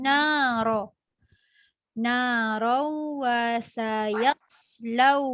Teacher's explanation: tanwin bila bertemu dengan huruf waw, dia kena dengung bunyikan huruf waw sikit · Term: idgham ma'al gunnah